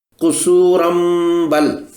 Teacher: تنوین کے پوشیدہ نون کی آواز کو میم میں بدلنا ہوگا اور پڑھیں گے قصورم بل۔